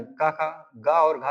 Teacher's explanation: ये कंठ से उत्पन्न होते हैं